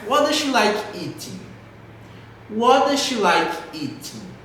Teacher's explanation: De novo, entonação lá embaixo porque não é uma perguntinha de yes or no.